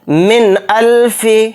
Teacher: نون ساکن کی آواز کو ظاہر کر کے بلا غنہ کے جلد پڑھیں گے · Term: اظہار حلقی